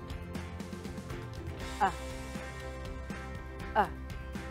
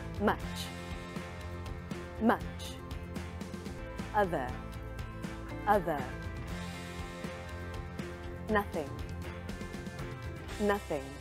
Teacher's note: my mouth is not as open as the a sound also my tongue is lifted a little bit and pulled to the back my lips are relaxed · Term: uh sound